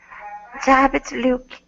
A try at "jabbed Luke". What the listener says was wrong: Okay, that's pretty good. That's pretty good.